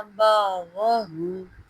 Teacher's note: الف سے نہیں بلکہ عین کے مخرج سے ادا کریں گے